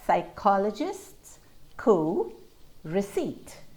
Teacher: we don't hear that p at all absolutely not at the start in the middle or at the end of the word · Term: silent p